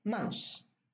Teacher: Now the tha is deleted